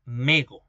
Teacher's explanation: La vocal final, la vocal cerrada posterior en posición final, valga la redundancia, evolucionó al semicerrado posterior.